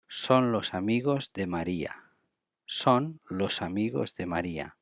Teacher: We link S and A and becomes like los amigos, like one word